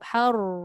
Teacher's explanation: Awal sahaja yang ada getaran. Hujung tak ada dah. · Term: takrir